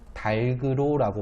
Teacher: 닭 뒤에 으로가 붙을 경우에는 달그로라고 발음을 하는 게 맞아요.